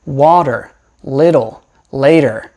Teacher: we are probably going to make something called a flap or a tap which is when your tongue just goes up and down